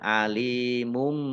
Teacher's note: Alimum, lam kasroh ya sukun, juga mat tabi'i, panjang 2 harokat. Domah tanwin bertemu dengan huruf ba, bacaan iklab, dibaca membalik. Tanwinnya dibaca mim.